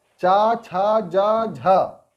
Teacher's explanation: इसको बोलने में जुबान जो है संघर्ष करता है सांस के साथ। तो ये है आपके चा, छा, जा, ठीक है, और झा, स्पर्श संघर्षी ये हो जाते हैं।